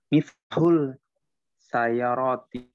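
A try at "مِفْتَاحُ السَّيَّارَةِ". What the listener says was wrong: Nah, bukan tahul, miftahus sayar. Kan itu huruf syamsiah ya. Jadi alif lamnya tidak dibaca, langsung dimasukkan miftahus sayaroti.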